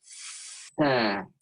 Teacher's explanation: Huruf sa itu adalah mempertemukan ujung gigi seri atas dengan ujung lidah kita. Bedanya dengan huruf ta, kalau huruf ta itu selesai huruf baru ada angin.